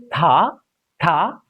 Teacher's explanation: The tip of the tongue comes in between upper teeth and lower teeth.